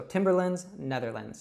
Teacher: And this is very similar to one of the countries in Northern Europe, which is called the Netherlands, but we call it the Netherlands. We reduce that A to an I sound.